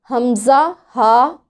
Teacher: हमज़ा, हा हलक के सबसे नीचे वाले हिस्से से, जिसे अक्साउल हलक कहते हैं, अदा होता है। अक्साउल हलक यानी हलक के सबसे निचले हिस्से से हमज़ा, हा अदा होते हैं।